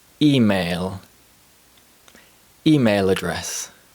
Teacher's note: A dark L sound may turn into a light L sound through the process of catenation or consonant vowel linking.